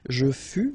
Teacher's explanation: keep in mind that final S is not pronounced. Tu fus, exactly the same thing, final S not pronounced.